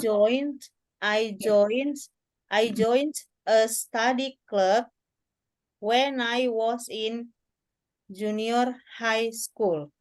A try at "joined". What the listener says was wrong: Ya, jadi join-nya itu bukan pakai T, tapi pakai ed. Joined. Joined. itu ya, suaranya nih di sini tuh ya. Lidahnya itu naik ke atas gitu, ke bagian langit-langit mulut, ya. Joined. Joined.